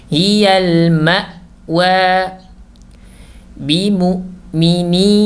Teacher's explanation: Nah, perhatikan di sini al-hamzatu as-sakinah, hamzah yang sukun. Maka hamzahnya tidak boleh mengalir saat sukun ya.